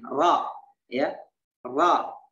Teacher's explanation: Ro berada di punggung lidah, lidahnya begini.